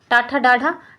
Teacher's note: ट वर्ग हमारा होता है मूर्धन्य